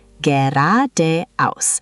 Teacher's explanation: The emphasis is on the second syllable.